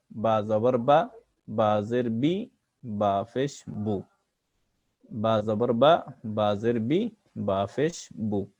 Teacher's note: আর বা দুই ঠোঁটকে মিলিয়ে পড়তে হয়, বা দুই ঠোঁটকে মিলিয়ে পড়তে হয়, বা অক্ষর দুই ঠোঁটকে মিলিয়ে পড়তে হয়।